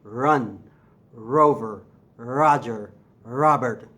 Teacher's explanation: your R comes from back here. It's a glottal sound, a vocal sound.